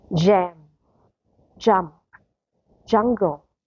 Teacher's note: For the letter J in English is voiced affricate, an unaspirated sound. And the sound is stronger than Georgian. Georgian is softer.